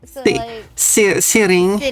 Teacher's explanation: a lot of Americans don't pronounce the T